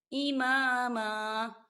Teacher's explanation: وقف کی صورت میں ہم اسے امامن نہیں پڑھیں گے، اماما پڑھیں گے، 2 زبر کے بجائے 1 زبر پڑھیں گے